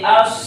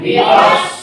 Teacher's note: बस स्वाद के अंदर सिफत इस्तिगला है और स्वाद हुरूफ मुस्तालिया में से है, तो इसको अदा करने की ज़बान की जड़ को उठा देंगे, बुलंद करेंगे, तो स्वाद हो जाएगा